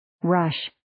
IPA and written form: rəʃ (Rush)